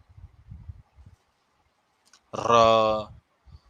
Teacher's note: जब इसको बोलते हैं तो जीभ हमारी पूरी हिलती है ना, र, इसलिए प्रकंपित ध्वनि भी इसे कहते हैं।